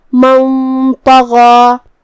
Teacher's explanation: طا بھی حروف الاخفاء میں سے ہے تو ہمیں نون کو چھپاتے ہوئے لیکن غنہ کے ساتھ یہ حکم کو ادا کرنا ہے، جو کہ طا حروف التفخیم میں سے ہے اور غنہ اپنے اگلے والے حرف کا حکم لیتا ہے تفخیم میں اور ترقیق میں. تو ہم یہ غنہ کو بھی بھاری آواز میں ادا کریں گے کیونکہ طا حروف التفخیم میں سے ہے